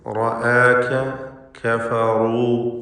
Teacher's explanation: ഈ റാഇകളൊക്കെയും നല്ലപോലെ സ്വരഭാരത്തോടെ തടിപ്പിച്ച് ഉച്ചരിക്കണം. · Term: തഫ്ഖീം